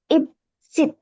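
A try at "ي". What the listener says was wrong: இத் அல்ல இத் யாட உச்சரிப்பு எடுக்கணும் இத் சுத் இத் எஸ் சுத் இத் சுத் இத் அந்த யாட உச்சரிப்பு வரணும்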